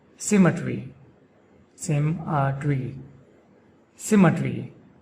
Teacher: The emphasis is on the first syllable sim.